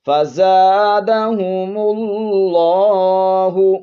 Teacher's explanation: لفظ اللہ کے لام کو موٹا پڑھیں گے